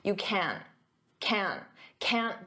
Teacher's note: Now notice can't. In spoken English, I'm not going to pronounce that hard can't with the T.